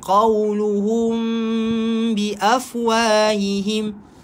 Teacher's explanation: Tapi qaw, sebab qaf tebal. Qawluhum, mim bertemukan ba, ikhfa syafawi, dengung.